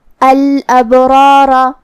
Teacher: جو کہ یہاں را پہ زبر ہے تو را کا حکم ہے تفخیم